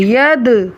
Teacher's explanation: ید، دال پر قلقلہ ہو رہا ہے